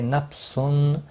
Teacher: تنوین کے بعد حروف حلقی کا عین ہے، اظہار حلقی ہوگا، گنہ نہیں کریں گے